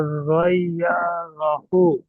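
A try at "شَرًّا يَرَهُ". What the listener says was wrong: শার ইয়ারাহু, ইয়াতে টান নেই। শার ইয়ারাহু।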